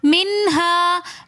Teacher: منہا میں نون ساکن کے بعد حروف حلقی میں سے ہا رہا ہے، تو اس لیے ہم نے یہاں پر نون ساکن پر غنہ نہیں کیا، ہم نے اس کو پڑھا منہا، نون کو ہم نے واضح کر کے پڑھا